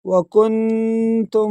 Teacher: اچھا اس مسٹیک کو بھی آپ دور کر لیں، آگے آیت ہے وکنتم نون ساکن پر، اور نون ساکن کے بعد حروف اخفا کے 15 حروف میں سے تا آیا ہے تو یہاں پر غنہ ہوگا